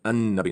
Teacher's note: Right, so A-L, and the L, because there's an N next to it, and the N is using the tongue as well as the L, it becomes An-Nabi